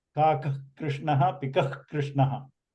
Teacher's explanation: That k sound before the k, kr is the jihva mulya